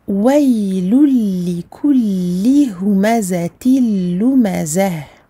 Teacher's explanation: Ici à la fin je transforme le ta marbouta en ha. C'est ce qui se passe à chaque fois que vous avez le ta arrondi et que vous vous arrêtez dessus.